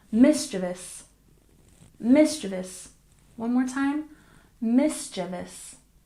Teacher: mischievous stress the first syllable